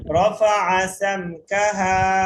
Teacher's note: রফা আতে টান নেই, টান দিবেন না